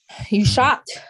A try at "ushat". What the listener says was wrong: No, never. It's always ooh, not you. The only way it would be a U is if a Y was before it.